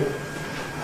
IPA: ˈteɪbo